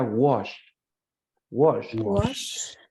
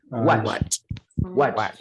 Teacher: La SH es mucho más, digámoslo, floja en la boca. En la boca no está tan tensa. Es mucho más relajada.